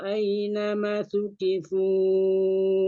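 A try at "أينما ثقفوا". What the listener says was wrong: Aynama panjang mah ulang.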